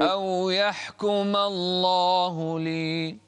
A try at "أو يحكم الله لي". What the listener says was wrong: أو يحكم الله لي. أو يحكم الله لي